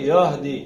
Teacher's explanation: اس ہا کو سینے کی جانب جو حلق ہے وہاں سے ادا کرنا ہے. یح نہیں کرنا، یہدی سینے سے.